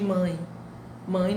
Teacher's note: nós escrevemos mãe com E, mas a pronúncia é o I. Aí nós temos vogal mais semivogal. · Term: ditongo